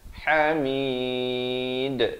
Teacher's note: Ha di pertengahan kerongkong. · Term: izhar halqi